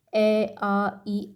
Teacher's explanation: इसके आधार पर 2 भेद किए जाते हैं: मौखिक स्वर, जिसके उच्चारण के समय कोवा ऊपर उठकर नासिका विवर को बंद कर लेता है और सारी की सारी हवा मुंह से ही निकल जाती है